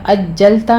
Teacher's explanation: اجلتا میں جیم پر تشدد کریں گے سختی کے ساتھ اس کو پڑھتے ہوئے